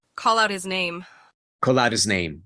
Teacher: the T ends up being between vowels, sounds like a D.